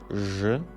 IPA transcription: ʒ